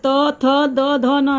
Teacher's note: फिर त वाला दांत के पास आके जीभ लगती है, तो ये त वर्ग त थ द ध न, ये सब बोलने में दांत के पास जीभ आपकी लगेगी